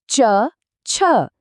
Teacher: જીભ તાળવાને અડી એ છે તાલવ્ય